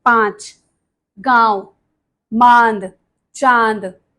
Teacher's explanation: इसको बोलते समय ध्वनि मुख और नासिका, नाक दोनों से निकलती है, जैसे कि 5, गांव, मांद, चांद। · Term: अनुनासिक